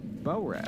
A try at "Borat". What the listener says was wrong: It's just the first few times we're like Bo-rat. Like it's two different words. No, but they're not two different words. It's one word. You're hyphenating it at most.